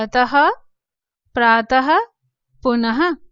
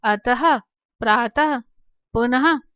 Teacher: आपको ह का उच्चारण सुनाई दे रहा होगा। तो जब भी शब्द के अंत में विसर्ग लगते हैं तो इनका उच्चारण एक हल्के ह के रूप में, हकार, पूर्ण रूप से नहीं, एक हल्के हकार के रूप में इसका उच्चारण होता है · पूरा हा हम नहीं बोल रहे हैं, एक हल्का सा हा का उच्चारण जो है, एक ध्वनि जो है वो सुनाई देती है विसर्ग में